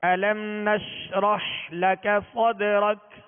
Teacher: میم ساکن ہے، اس کو جمع اور مضبوطی کے ساتھ ادا کرنا ہے کہ آواز ہلنے نہ پائے. نش آواز شین کو ادا کرتے ہوئے منہ میں پھیل جائے گی مگر اس میں بھی قلقلہ نہ ہو.